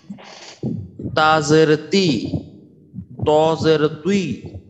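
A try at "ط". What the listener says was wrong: মাশাআল্লাহ, মাশাআল্লাহ, খুব সুন্দর হয়েছে। তো আপনার তয়ের উচ্চারণটা খুব সুন্দর হয়েছে।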